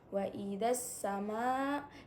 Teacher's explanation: Wa idzas sama, di situ terdapat hukum bacaan mat wajib muttasil karena ada huruf mat tabi'i bertemu dengan huruf hamzah pada satu kalimat dan dibacanya 4 sampai dengan 5 harokat